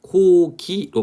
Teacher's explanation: 곡이라고 이 글자만 보게 되면 동일하게 기역이 쓰여 있지만 고기로 발음하기 때문에 앞에는 K, 뒤에는 G. 그래서 무성음과 유성음으로 발음이 실제는 다르게 난다는 것이죠. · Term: 변이음